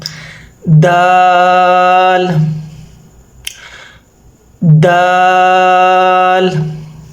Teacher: زبان کی نوک جو سامنے کے 2 دانت ہیں، اوپر والے 2 دانت، ان 2 دانتوں کی جڑ میں مسوڑا ہے کھردرا قسم کا، اس کو عربی میں نتیہ کہا جاتا ہے۔ زبان کی نوک جب اس نتیہ سے ٹچ ہو جائے گی تو یہ حرف دال ادا ہوگا۔